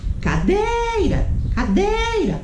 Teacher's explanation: paroxítona, quando a sílaba tônica é a penúltima, não a última, penúltima